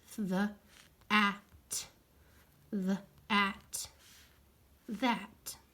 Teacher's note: th makes my vocal cords vibrate so that means it's a voiced sound